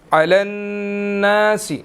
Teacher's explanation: نون مشدد ہے، یہاں پر ہم نے غنہ کرنا ہے